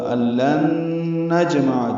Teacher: الَّن نجمع، حمزہ کو لام سے، لام کو نون سے ملانا ہے، ادغام ہوگا، غنہ بھی ہوگا · جیم ساکن پہ قلقلہ ہے، 2 عین یہاں پہ، نجمع، ایک نجمع کا عین اور دوسرا عظامہ کا عین، وسط حلق سے ادا کریں گے، دونوں جلدی پڑھیں گے۔